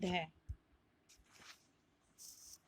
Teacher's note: जीभ और दांत से बोली जाने वाली ध्वनि है।